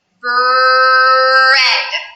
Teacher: my lips start to make the shape of the R even while I'm saying the B · the R is actually stronger than the first sound in the word. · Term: R blends